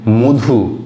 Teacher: পাশাপাশি আমরা দেখছি মধু, লিখি আমরা মধ হসু মধু সব জায়গাতেই, কিন্তু আমরা বলি কি মধু, অর্থাৎ সেখানে হয়ে যায় ওটা, অধ্বনিটা হয়ে যাচ্ছে ও ধ্বনি। কেন হয়ে যাচ্ছে না, এটা হচ্ছে একই রকমভাবে এই অন্য ভাষাগোষ্ঠীর প্রভাবের ফলেই আমরা দেখতে পাচ্ছি অধ্বনিটা ও ধ্বনিতে পরিবর্তিত হয়ে যাচ্ছে।